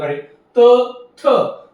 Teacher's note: ज्यावेळेस तुम्ही त आणि थ चा उच्चार करणार आहेत त्यावेळेस तुमचा जिभेचा शेंडा दाताच्या मागच्या बाजूला जाऊन भिडणार आहे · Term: दंत्य वर्ण